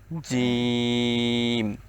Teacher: উচ্চারণ করতে হবে জিহ্বার মধ্যখান উপরের তালুর সঙ্গে লাগিয়ে